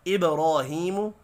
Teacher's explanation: با ساکن پر قلقلہ کریں گے